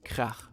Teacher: German has the special ach sound, which sounds very throaty.